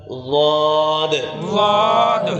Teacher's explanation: ہے اور سیٹی کی آواز بھی ہم نے بند کرنی ہے زبان کو اوپر لگائیں گے دانتوں کے ساتھ اوپر والے دانتوں کے ساتھ